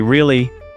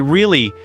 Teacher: if I say really with a high voice, it means I'm surprised. But if I say really with a low voice, maybe I'm not so interested.